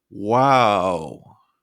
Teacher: stretching wow at the same pitch to express amazement we also use it this pitch to express shock or surprise